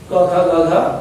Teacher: क ख ग घ, इनका उच्चारण स्थान कंठ